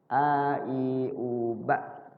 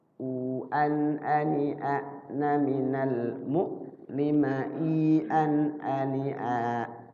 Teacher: Jadi hamzah itu keluar dari tenggorokan bagian bawah.